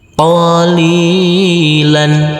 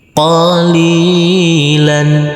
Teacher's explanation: huruf lam ini kita baca panjang dengan panjang dua harakat karena huruf lam berkasr bertemu huruf ya bersukun selanjutnya huruf lam